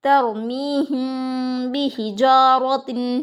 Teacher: میم ساکن کے بعد با آیا ہے گنہ اور اخفا کے ساتھ پڑھیں گے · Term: اخفا شفوی